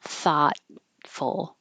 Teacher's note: You won't hear that T in the middle.